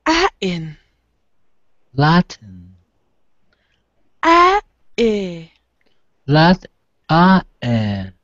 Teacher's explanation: what I'm showing you is it's called a glottal sound, guys. It's called a glottal. It means of the throat.